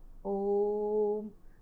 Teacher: वे स्वर जिनके उच्चारण में ह्रस्व स्वरों से लगभग तिगुना समय लगता है उन्हें कहा जाता है प्लुत स्वर। इनका ज़्यादातर प्रयोग किया जाता है जब हम किसी को लंबी आवाज़ देकर पुकारना चाहते हैं या कोई लंबी ध्वनि बोलना चाहते हैं, जैसे ओम।